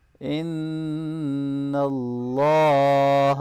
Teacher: نون مشدد پہ ہم غنہ کریں گے